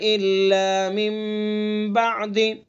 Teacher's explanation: نون کو میم سے بدل کر پڑھیں گے، ایک الف کے برابر ناک میں آواز لے جا کر کے اس کو ادا کریں گے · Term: قلب اقلاب